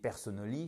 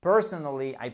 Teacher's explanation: mot parce que si vous dites personn ça ne marchera pas c'est bien évidemment la prononciation et accentué au bon endroit sur la première syllabe